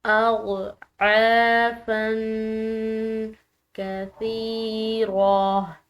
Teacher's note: عین حلق سے ادا ہوگا، اس کے بعد الف مدہ کی وجہ سے اس کو ہم نے کھینچ کر ادا کرنا ہے. اضعافا، فا کی تنوین ہے، اس کے بعد کاف ہے جو کہ حروف اخفا کے حروف میں سے ہے، تو اس فا پر جو ہے ہم نے اخفا کرنا ہے، اس کو مخفی پڑھنا ہے اس تنوین کی آواز کو.